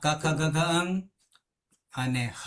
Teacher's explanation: કુમાં ક ખ ગ ઘ અંગ અને હ આ બધા બોલશું ને તો અહીયા કંઠમાંથી પ્રગટ થશે